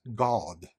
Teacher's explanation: in England it's God. It's an uh, not an ah.